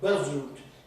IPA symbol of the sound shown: bʌz